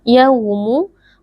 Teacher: bacaan Lin karena ada wau sukun sebelumnya berharakat fathah wau sukun dibaca dengan lunak